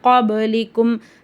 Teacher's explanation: பா சுக்குூன் வந்து கல்கலாவுடைய எழுத்து அப்ப அந்த பா சுக்குன நம்ம அசைச்சு ஓதணும்